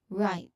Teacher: So the right is pronounced with a diphthong that starts with I.